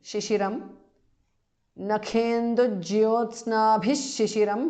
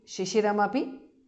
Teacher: Visarga changes to sh.